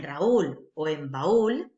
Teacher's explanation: la vocal cerrada, en este caso la U, es la fuerte, es la tónica, y por eso es un hiato